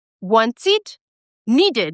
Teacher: when the ed comes after the t sound or the d sound, it is produced as it